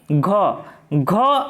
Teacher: घ एक सघोष महाप्राण ध्वनि है